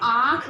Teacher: इन स्वरों के उच्चारण के लिए हवा हमारे मुख व नाक दोनों से निकलती है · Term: अनुनासिक स्वर